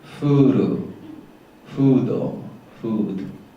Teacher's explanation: in most cases your pronunciation like fool or food is too low and forward